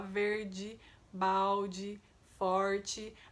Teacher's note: Atenção também ao fato de que em algumas regiões as palavras terminadas em e são pronunciadas com i, né? Aqui na minha região por exemplo é assim, a gente fala verde, balde, forte.